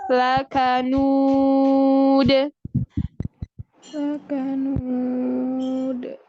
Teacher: Di akhir ada qalqalah, maka suara dal dipantulkan.